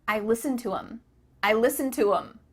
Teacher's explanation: the word them has the th cut out